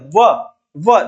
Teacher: फिर इसमें अपने जो और बच जाते हैं उनमें ये है वकारांश दंतोष्ठ, व का उच्चारण स्थान दंतोष्ठ से है, दंतोष्ठ मतलब दो दो जिनके दंतोष्ठ, दंतोष्ठ, व का उच्चारण स्थान दांत और ओष्ठ दोनों से किया जाता है।